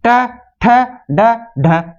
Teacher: ये चारों वर्ण बोले जा रहे हैं मूर्धा से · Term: मुर्धन्य